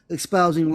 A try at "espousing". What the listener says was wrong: There's no X in espousing. Espousing, not ex-spousing.